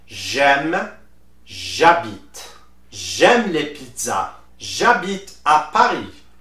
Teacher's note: you put the apostrophe and you link the J sound with the following vowel